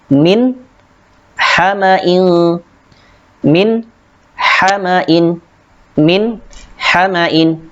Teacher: Di sini terdapat nun mati bertemu dengan ha, dibaca jelas.